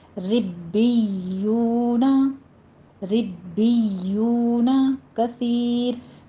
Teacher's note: اس کو ربیون نہیں کرنا، نرمی سے نہیں پڑھنا ہے، با کے اوپر بھی تشدید ہے، یا کے اوپر بھی تشدید ہے